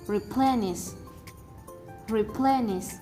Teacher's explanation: the stress is located on the second syllable